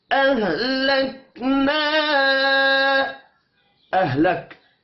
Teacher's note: کاف ساکن پر قلقلہ نہیں کرنا